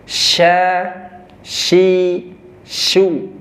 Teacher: Cara pelafasannya tengah lidah bertemu langit-langit ya.